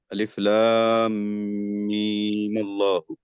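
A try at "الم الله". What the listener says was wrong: हाँ मीम अल्लाह, क्या मद्दे लाजिम इतना ही खींचते हैं? लाजिम 6 हरकत, सबसे लंबा मद होना चाहिए ना, और लंबा खींचिए। ہاں تو یہ مد لازم ہوگا یا مد اصلی ہوگا؟ مد لازم ہوگا.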